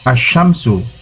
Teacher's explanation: When al, alif lam, is prefixed to a noun beginning with solar letters, the L of the al is assimilated to the solar letters